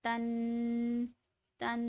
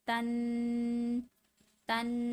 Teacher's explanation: دونوں میں غنہ ہوتا ہے، یعنی کہ ناک میں آواز جاتی ہے